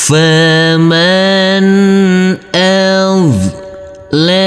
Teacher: huruf nunnya harus kita baca dengan terang atau jelas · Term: izhar